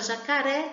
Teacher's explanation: E na palavra jacaré, a sílaba que sai com mais intensidade é o ré. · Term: sílaba tônica